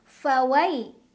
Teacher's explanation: ada huruf lin karena ada ya sukun, sebelumnya ada huruf yang berbaris fathah. Cara bacanya dilunakan atau dilembutkan.